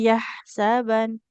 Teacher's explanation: Di sini ada nun bertasdid ditahan dulu gunah ya.